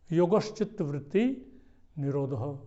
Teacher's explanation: जब संधि छेद करेंगे, संधि करेंगे तो श बन जाता है इसमें, तालव्य सकार।